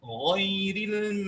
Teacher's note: Sehingga belum cukup kalau kita baca ghairil belum cukup, karena apa? Sifat isti'la huruf ghain harus melahirkan mustahak pada sifat tafkhim